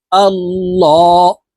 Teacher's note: লাম খারা জবর ল শব্দের আগের হরফে জবর অথবা পেশ হইলে এই লামকে ল অর্থাৎ মোটা করিয়া পড়িতে হয়